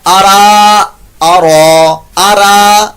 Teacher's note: را پر زبر یا پیش ہو تو اس کو پر موٹا